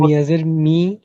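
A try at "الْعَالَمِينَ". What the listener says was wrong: মনে মনে লামের উপরে জবর আছে, জের বাদ দিয়ে জবর দিয়ে পড়েন আইন খারা জবর হয়। আলামিনা। আর যদি থামিয়ে আমরা অক্ষ করি, তাহলে হবে আলামিনা।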